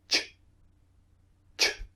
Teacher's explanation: don't use the vocal cords when producing the sound ch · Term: unvoiced